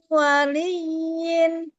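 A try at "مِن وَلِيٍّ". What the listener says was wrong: Masih miring di harokat kasroh. Li waliyin.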